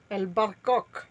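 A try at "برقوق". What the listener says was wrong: Pas coq. Le coq, tu fais le son du coq. Tu dis pas le coq. Le barqoq.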